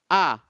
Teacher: A itu mahrodnya atau hamzah mahrodnya adalah di pangkal tenggorokan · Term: huruf hamzah